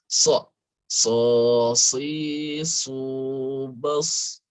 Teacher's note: Jadi so itu tempat keluarnya di ujung lisan ke bawah. Tapi sifatnya itu membuat pangkal lisan naik ke atas. Jadi yang ini ke bawah, pangkal lisannya ke atas.